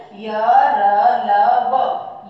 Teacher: वर्णों का उच्चारण करते समय हमारी जिह्वा मुख के किसी भाग से पूरी तरह स्पर्श नहीं करती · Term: अंतस्थ व्यंजन